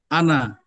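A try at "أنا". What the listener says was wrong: Nun itu jadi tidak panjang ya, nunnya di ana itu. Ana.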